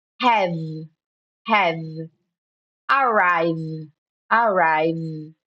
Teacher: em vez de você falar have, have, você vai parar no V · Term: vogal de decoração